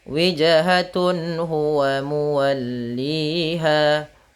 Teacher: maka dia harus dibaca dengan jelas suara tanwin atau nunnya. Dan tidak boleh ditahan, tidak boleh walikulli wijhatun nggak boleh, tapi jelas saja wijhatun huwa muwalliha, ha besar, jangan huwa, tapi jelaskan hanya huwa muwalliha, mad tabi'i pada lafal li dan ha. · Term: izhar halqi